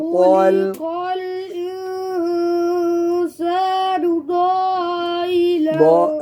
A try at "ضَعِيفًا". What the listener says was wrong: نہیں ضعیف، انگلی رکھو نا، ضعیفا.